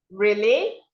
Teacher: You see, your voice goes high.